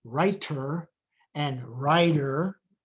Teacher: the T and the D both become this tap or flap between vowels in English